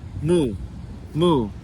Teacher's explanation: And it's a fourth tone. So the fourth tone is kind of like the word shooting down, shooting out of your mouth